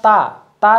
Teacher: इसके बाद आप ता, ता जो है आप बिना अपने जीभ को दांत से जो है मिलाए नहीं बोल सकते हैं। उसी प्रकार ता जो है देखिए यहाँ पर ता वर्ग ये दंत व्यंजन इसे इसलिए कहते हैं।